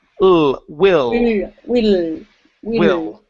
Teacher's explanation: instead of whe you need to move your tongue forward in your mouth